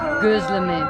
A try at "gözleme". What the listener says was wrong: Not with O, with Ö.